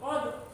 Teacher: dal sukun termasuk bacaan qalqalah, memantul.